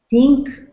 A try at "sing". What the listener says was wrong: No K. You can't have a K sound because this is sing. Say sing.